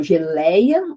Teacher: o lei é o mais forte e é um ditongo, e depois tem o a, perdeu o acento.